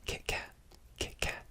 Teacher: They don't really pronounce the T fully.